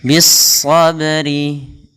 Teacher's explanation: pada lafal sabri ba-nya tipis dan dia termasuk pada huruf qalqalah pada lafal ba ini qalqalah, ketika dia sukun kita namakan dengan qalqalah. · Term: qalqalah sughra